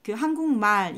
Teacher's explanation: 원래 말이라는 게 긴 소리였는데 한국말 했었을 때 또 이렇게 짧게 발음이 되는구나